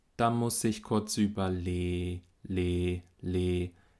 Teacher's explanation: Diese Silbe ist sehr tief. Und dann kehre ich zurück mit der Stimme in die mittlere Sprechstimmlage. · Das ist der Hauptakzent, der ist auf dem Verb, also dort auf der Silbe le und da gehe ich mit der Stimme ganz weit nach unten. Vorher ist die Melodie bewegt sie sich so, dass sie nahezu linear abfällt.